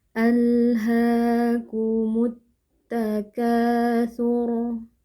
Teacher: huruf ha fathah yang di depannya ada alif kecil. Nah, ini adalah bacaan mad thobi'i. Kita panjangkan dua harakat.